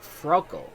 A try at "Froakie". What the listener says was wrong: Froakie. You read the I as an L, my friend.